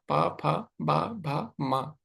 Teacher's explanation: आपको एक ही स्थान पे होठ को रखना होठों को जोड़ना होगा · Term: ओष्ठ